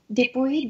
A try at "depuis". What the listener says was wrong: Depuis. C'est un U. Depuis. Alors, dites bien les U. Il faut bien dire les U, pas les OU.